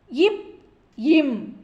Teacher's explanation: மேல் இதழும் கீழ் இதழும் பொருந்துவதால் பிறக்கும் மெய்யெழுத்துக்கள்